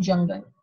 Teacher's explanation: A plosive followed by a fricative, as there is a closure and friction in the same place. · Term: affricatives